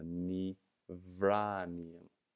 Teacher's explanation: Ni, so we need to soften our first letter here. Our first letter is a B, softens to a V. So ni vranian. So the B is completely replaced by a V.